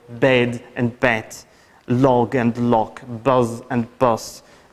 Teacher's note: global devoicing of voiced consonants in the final position